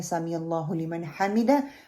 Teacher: اللہ کی جو شد ہے اس کو پکڑنا ہے، 2 کاؤنٹ لمبا کرنا اور اس کو موٹا کریں گے